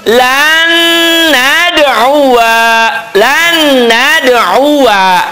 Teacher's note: Lan jadi gunnah, nunnya bertasydid jadi gunnah. Hanya gunnahnya idgham bigunnah.